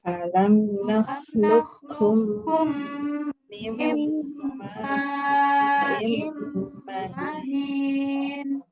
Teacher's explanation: Maka qaf sebagai huruf pertama dibuang ya. Dia hanya isti'la ya, enggak seperti to dia itbaq, dia tidak itbaq.